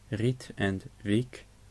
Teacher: First, the long I, which is spelled I-E. It is pronounced like the English E, but actually pronounced shorter.